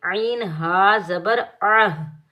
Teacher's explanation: عین کو ہم ہا ساکن کے ساتھ ملائیں گے، بغیر کھینچے پڑھیں گے